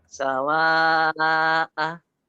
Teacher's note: Kemudian setelah alif ini ada hamzah. Hamzah yang bulat. Nah, ini termasuk mat wajib mutasil.